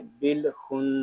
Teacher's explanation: یہاں نون مشدد ہے، اس میں غنہ کریں گے. اس کو خن ایسے نہیں پڑھیں گے، اس کو پڑھیں گے بالخن.